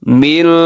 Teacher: من میں نون ساکن کے بعد شین ہے تو یہاں پہ اخفا ہو رہا ہے، من تھوڑا سا آواز کو ناک میں لے کے جانا ہے